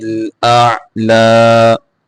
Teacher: آگے جیم کے اوپر کلکلا کریں گے، را کو موٹا کر کے پڑھیں گے، لام کے اوپر کھڑی زبر ہے اس کو کھینچ کے پڑھیں گے.